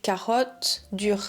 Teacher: notice how my RS are not super rough there's just a little bit of resistance